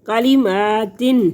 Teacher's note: میم کھڑی زبر 1 الف کے برابر لمبا کریں گے